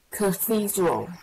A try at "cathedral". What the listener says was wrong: Yes.